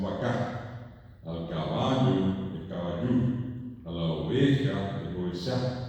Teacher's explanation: En guaraní las palabras son todas agudas